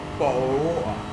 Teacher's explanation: Bottle of water, where people don't pronounce their T's. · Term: northern accent